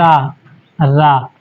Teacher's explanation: रा को हम बोलते हैं प्रकंपित